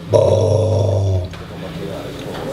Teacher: La vocale O nella sillaba bo del canto a tenore è nella parte profonda della bocca